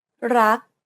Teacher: you want to stop just as the back of the tongue contacts the roof of the mouth. Never release the air of final consonants in Thai words. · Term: unreleased